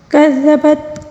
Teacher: کذبت ثمود بطغواہا۔ کذبت، کاف کو باریک پڑھیں گے، ذال کو نرمی سے پڑھیں گے